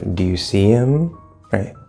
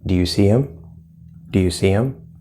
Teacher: even if that last word is not stressed which in this case him is not stressed we're gonna go up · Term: question tone